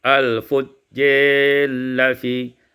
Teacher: Selanjutnya kita baca surat Al-Mutaffifin ayat yang ke-7, al-fujjari la fi imalatu fathatir ra wal alif wal idghamur ra fil lam. Diimalahkan fathah ra dan alif dan idghamkan ra pada lam